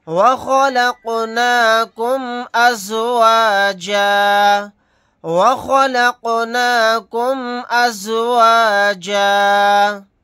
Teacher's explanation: یہاں پر قاف ساکن ہے، قلقلہ کر کے پڑھیں گے۔ آیت کرنے کی صورت میں جیم الف کے ساتھ ایک زبر کو پڑھیں گے، 2 زبر نہیں پڑھے جائیں گے۔